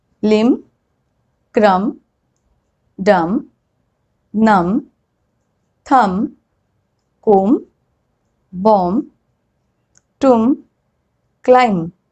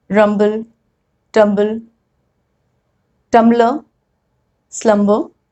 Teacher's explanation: Whenever there is M and B together at the end of the word, I am not pronouncing B.